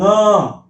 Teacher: इसका उच्चारण होता है नासिका से, नाक से।